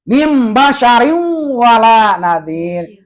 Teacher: Mim jangan dibaca min sebab ada nun mati ke depan ada huruf iqlab